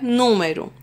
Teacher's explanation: antepenúltima sílaba é a tônica é a mais forte então ela vai ser classificada como proparoxítona